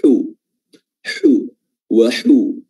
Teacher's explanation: Dan juga dia berharakat dhammah, maka dhammahnya harus dipermantap lagi dengan memonyongkan kedua bibir ke depan